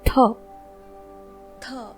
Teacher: हमने पिछले स्लाइड में समझा था कि त यह एक अल्प प्राण वर्ण है और इसी त को आप जब महाप्राण में उच्चारित करेंगे तब यह बन जाएगा थ